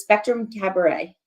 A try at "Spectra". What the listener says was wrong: Well, you call them Spectrum instead of Spectra.